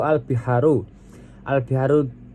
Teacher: Al-biharu di situ dibaca alif lam qamariyah karena lamnya dibaca jelas karena bertemu dengan huruf qamariyah yaitu ba